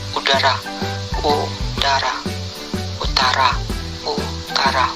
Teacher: kriteria vokal belakang tinggi atas bundar